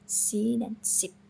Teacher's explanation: letak lidahnya itu mendekati langit-langit mulut dan biarkan udara keluar melalui celah di antara gigi atas dan bawah.